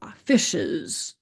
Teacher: notice that we pronounce the e in the word fishes as a schwa, fishes. So the schwa is that neutral pronunciation of a vowel.